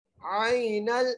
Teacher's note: یہاں پر حرف لین کا قاعدہ لگ رہا ہے، بغیر کھینچے پڑھنا ہے